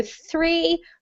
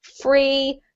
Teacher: That's the th that we practiced before, where your tongue is in between your teeth, and then you switch so that your teeth touch your lip for free